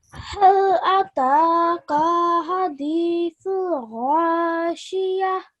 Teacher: And we can hear that you've put schoon on the ha there. And you've changed ta marbuta into a ha.